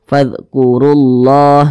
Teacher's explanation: maka lafaz Allahnya dibaca tebal, dibaca tafkhim.